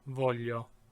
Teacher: remember that GLI is the palatalized L.